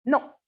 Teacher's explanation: may be uttered with falling pitch as a definite refusal or denial no or with rising toe as the query checking whether a